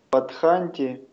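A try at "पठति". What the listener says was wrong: Патханти, не придумывайте. Читайте то, что написано. Не придумывайте буквы.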